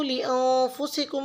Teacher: अब यहाँ पे लिअन्फुसिकुम में नून साकिन पे इख्फा होगा, मीम मुशद्दिद पे गुन्ना होगा।